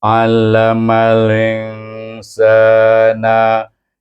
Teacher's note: harakat kemudian kita jumpa Sin itu bertemu dengan alif kecil itu huruf alif sebelumnya baris di atas dibaca dengan mad asli dua harakat